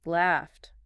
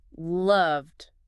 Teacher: Laughed ends quick. No buzz. T. Then loved keeps buzzing, ends D.